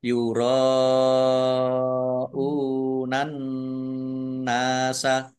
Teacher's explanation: Ra fathah alif mat tabi'i tetapi karena bertemu dengan huruf hamzah dalam satu kata maka menjadi mat wajib muttasil. Dibaca panjang harus lima harokat.